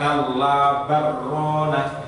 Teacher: karena lam sukun bertemu dengan ro, itu disebut dengan bacaan idgham mutaqarribin